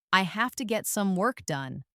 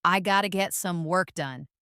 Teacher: Feel how have to naturally reduces to gotta, making it faster and smoother.